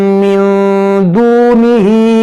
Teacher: नून साकिन के बाद दाल है तो यहाँ पर इख्फा होगा